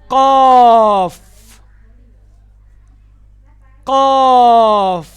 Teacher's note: زبان کی جڑ کوے کے قریب نرم تالو سے لگے گی